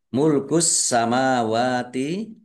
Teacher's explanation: alif lam samsiah karena tidak dibaca langsung masuk ke huruf berikutnya yaitu sin, ditandai sinnya ada tasdidnya, sinnya dibaca double. Mim fathah berdiri mat tobi'i, wawu fathah berdiri mat tobi'i, panjang dua harokat.